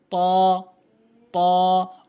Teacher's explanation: জিহ্বার আগাটা নিয়ে সামনে দুটি দাঁতের গোড়াতে লাগাবেন